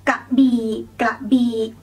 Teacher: just go low for both syllables.